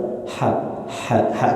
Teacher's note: dia punya sifat hams Nah jadi udara dia keluar tidak terbendung tidak tertahan dikeluarkan